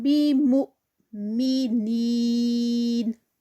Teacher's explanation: مُ پہ حمزہ ہے، تھوڑا سا جرک لگے گا. مِنین، نین میں بھی یا مدہ، اور یہ 4 کاؤنٹس کا اسٹریچ ہوگا یہاں پر.